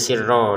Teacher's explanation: tulisannya sirron kita bacanya sirro dipanjangkan rnya dua harakat karena kita berhenti